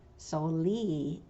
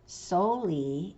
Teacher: Mountain Maidu puts the stress on that last E. Concal usually does it the other way around.